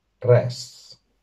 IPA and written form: 'rɛsː (ress)